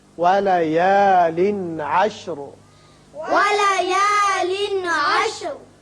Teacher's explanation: یہاں تنوین کے بعد عین جو کہ حروف حلقی میں سے ہے آ رہا ہے، لہذا یہاں اظہار حلقی ہوگا